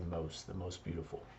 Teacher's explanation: And the best, we commonly don't say that T, so the best way, the best thing. In most beautiful, the T is a little bit silent